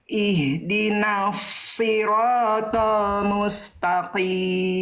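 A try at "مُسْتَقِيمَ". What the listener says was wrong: Oke, huruf ta, huruf tipis, huruf tebal. Huruf ta Bunda, huruf ta, huruf tipis, huruf tebal. Bunda melafalkannya tebal. Jangan ta. Ta. Mustaqim.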